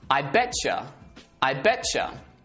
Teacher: they merge together and the sound becomes a CH sound